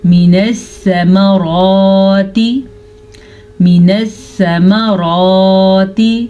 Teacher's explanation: را کو پر پڑھیں گے کیونکہ را کے اوپر کھڑی زبر ہے.